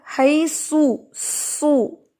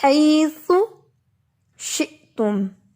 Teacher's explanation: اب اس میں کیا ہے، اگر میں اس کو غلط پڑھوں گی، سین کی طرح پڑھوں گی، زبان اندر رکھ کے پڑھوں گی، مخرج پر زبان نہیں لگاؤں گی، تو پھر کیا ہوگا، حیثو، سو، پھر یہ سو بن جائے گا جو کہ رانگ ہوگا، ٹھیک ہے۔